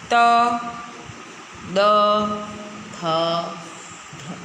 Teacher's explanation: દંત્યના અક્ષરોમાં આપણી જીભ દાંતને સ્પર્શ કરતી હોય છે